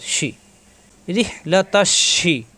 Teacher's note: জিব্বার মাঝখানে উপরে তালুতে লাগবে, শ্বাস আওয়াজ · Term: শিনে জের শি